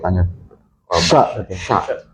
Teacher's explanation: mengucapkan sya itu berarti harus di tengah ya. Ya, tengah, naik ke langit-langit.